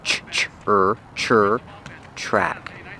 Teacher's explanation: The tr makes a ch chicken sound with the r together.